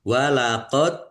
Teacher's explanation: dal sukun bacaan qalqalah ditampakkan pantulannya